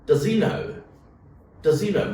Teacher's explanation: So usually when does is followed by he, what do you do to the H sound? You drop it in natural pronunciation.